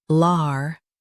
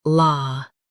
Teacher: US has lar. UK has la.